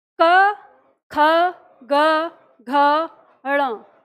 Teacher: ये ण सुनाई देता है क्योंकि हमारा उच्चारण कंठ से होता है, आगे से नहीं होता, तो ये हमें ण सुनाई देता है, ठीक है।